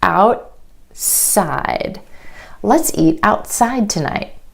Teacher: for example the word out side instead of outside out outside the tongue stays up for the T and goes straight into the S sound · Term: held T